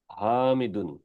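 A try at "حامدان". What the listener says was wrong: good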